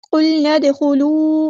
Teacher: نون کو ہم نے دال کے ساتھ ملا دینا ہے، حمزۃ الوصل ہمارا ڈراپ ہو جائے گا اور دال کو یہاں پہ ہلانا ہے، دال ساکن کو، کیونکہ قلقلہ ہوگا یہاں پہ۔